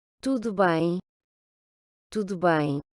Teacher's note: le U qui se prononce OU, le O final qui se prononce également OU, et puis le son nasal sur la voyelle du mot qui se finit par M